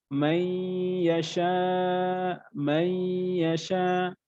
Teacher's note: একটু গুন্না করে মিলিয়ে পড়তে হবে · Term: ইদগামে বা গুন্না